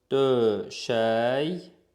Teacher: Burada K Y ilə əvəz olunur, çünki özündən sonra sait gəlib. Yəni, bu sözün tərkibində K yoxdur.